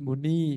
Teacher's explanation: Tapi kalau untuk bentuk nominatif jamaknya dia menjadi muni. Jadi i-nya jadi i panjang